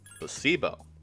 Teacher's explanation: The stress is on the middle syllable.